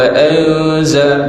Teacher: Thumma dengung, anza dengung iaitu ikhfa hakiki